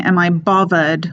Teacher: with two V's instead of the TH